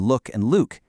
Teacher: Spanish speakers might completely miss the length difference between look and Luke.